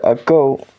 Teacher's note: the phonetic alphabet g, it is a voiced Velar stop.